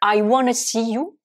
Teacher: Donc ici, dans want to, qui est le verbe vouloir, to want, eh bien, quand want to se transforme en wanna, vous voyez bien que le T de want et le T de to n'a pas été prononcé au profit du N de want